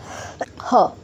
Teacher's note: ह को कंठ की सहायता से बोला जाता है यानी कि गले की सहायता से बोला जाता है